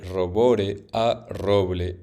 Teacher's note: Un ejemplo de reemplazo consonántico es el cambio de robore a roble, en el que la segunda consonante líquida r se vuelve en la consonante líquida l